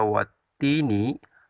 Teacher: Di sana terdapat alif lam syamsiah, yakni alif lamnya tidak dibaca atau lebur, atau lam ta'rif di situ alif lam dianggap tidak ada, tidak terbaca.